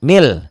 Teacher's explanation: nun mati ketemu lam ya Nun matinya enggak dibaca